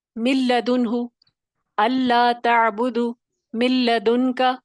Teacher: تو جب یہ مثال ہوگا تو دیکھیں نہ غنہ ہوا اور مضبوطی تو تھی مشدد کی، لیکن کیا ہوا، نون کی آواز اس کی صفت غنہ ختم ہو گئی